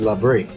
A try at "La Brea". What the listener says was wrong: So the correct pronunciation, because you need to remember there's an A at the end of that word, it should be La Brea. And Brea is pitch in Spanish, right? So La Brea. If you put La Brea, really, does not even sound Spanish anymore. I don't know what sounds, but this have no meaning in Spanish.